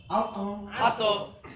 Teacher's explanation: প্রতিধ্বনি হবে, মানে কলকলা করতে হবে, ভিতর থেকে বলতে হবে।